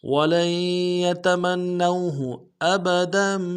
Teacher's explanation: واو لین ہے بغیر کھینچے پڑیں گے